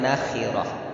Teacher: Itu ada huruf kha, ya, itu tebal nisbi, jadi tetap tebal ya